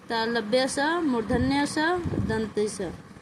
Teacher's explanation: तालव्य स मुर्धन्य स दंत स ये तीनों जो है ये अघोष है